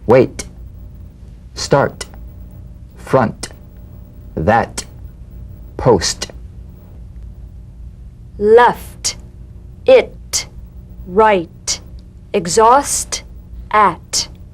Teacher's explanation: the unvoiced T tongue front palatal stop consonant cognate to the D · unvoiced T tongue front palatal stop consonant cognate to the D the same staccato springing action as the D drumbeat with no voice forms the light tap of the T